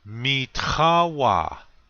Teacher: accent on the second syllable this means mine or my this word has a guttural t it has that